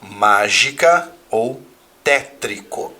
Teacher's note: E uma palavra proparoxítona, aquela que tem a antepenúltima sílaba tônica.